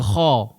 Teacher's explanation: Tak boleh dibaca ha macam tu. Dia kena baca kha, huruf isti'la.